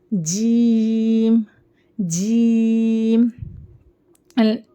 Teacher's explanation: दरमियानी जबान ऊपर तालू को लगाएंगे तो जीम अदा होता है · جیم درمیانی زبان اوپر تالو کو لگائیں گے تو جیم ادا ہوتا ہے